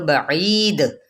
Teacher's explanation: دال حروف قلقلہ میں سے ہے وقف کیا تو بعید یہ قلقلہ ہو گیا یعنی ہلانا ٹھیک ہے جنبش دینا چلیں یہاں تک آپ لوگوں کا لیسن